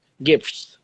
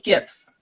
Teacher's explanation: You can't say FTS, so you just take out the T.